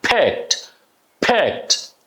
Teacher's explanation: This D is a T because the verb is ending on the K letter which is unwiscon. So the final D is a T sound.